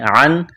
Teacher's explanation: ہے، واو مدہ ہے، ایک الف کے برابر کھینچنا ہے، عن نون ساکن کے بعد حمزہ ہے، حروف حلقی ہے، اظہار کریں گے، غنہ نہیں کریں گے